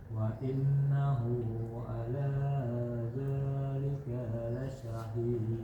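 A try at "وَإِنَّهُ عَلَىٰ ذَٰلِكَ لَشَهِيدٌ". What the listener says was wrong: Dzalika lasyahid. ini nggak boleh panjang. Dzalika lasyahid. Za panjang, ka pendek.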